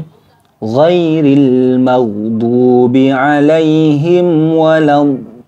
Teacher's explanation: Yaitu mad lazim jadi harus wajib dibaca panjang enam harakat atau tiga Alif